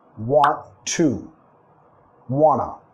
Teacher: vamos a estar reduciendo esas palabras de función a un sonido schwa